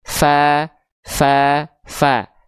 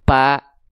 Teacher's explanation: Teman-teman melafalkan huruf fa harus keluar nafasnya